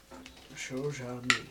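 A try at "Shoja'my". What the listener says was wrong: It's a hard J. It's a J. It's a J.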